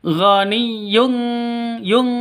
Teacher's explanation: ikhfa Hi Hakiki jadi ditambah dengan ng · Rabbi ghaniyyun, non tanwin bertemu dengan kaf. Samar didengungkan, siap-siap ke huruf kafnya, terus tanwinnya ditambah dengan ng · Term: ikhfa Hakiki, ikhfa hakiki